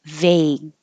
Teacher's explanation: you hold the G you won't hear it